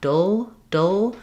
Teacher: And what's challenging there is when I do battle, dull, battle, I have to change the shape of my tongue. It's staying put on both the d and the touch behind the teeth, but the air escapes from the sides.